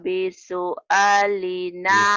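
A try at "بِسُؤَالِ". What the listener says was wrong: Bisu'a. Hanya panjang. Bisu'a.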